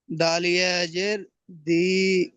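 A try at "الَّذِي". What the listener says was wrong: জাল, ওটা দাল নয়। র টান হবে না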